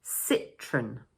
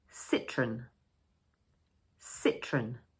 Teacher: So we pronounce it as two syllables, and for the first one, we say: "Sit" For the second one, we say: "Run" The stress falls on the first syllable.